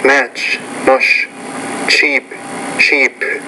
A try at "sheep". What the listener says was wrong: Cheap, sheep. You did not get those. It sounded like you said cheap and cheap.